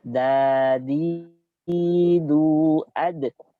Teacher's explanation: makhrajnya di punggung ujung lidah ditempelkan ke gusi gigi seri atas. Ke gusi, jangan ditempelkan ke langit-langit. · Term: huruf dal